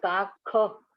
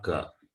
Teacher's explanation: Kha, it is Kha. Not Ka. Kha, Mahaprana.